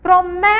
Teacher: Então, o mé aí é a sílaba tônica.